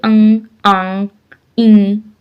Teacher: जिन स्वरों के उच्चारण में हवा मुंह के साथ साथ नाक से भी निकलती है, जैसे अंग, आंग, ई इत्यादि, यानी नाक का भी जिसमें उपयोग होता है। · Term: अनुनासिक स्वर